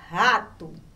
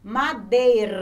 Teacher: som do rr no meio da palavra ou seja a gente fala ele com força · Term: forte